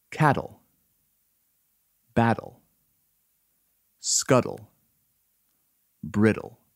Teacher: t also turns into d when the t occurs between a vowel sound and l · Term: t to d rule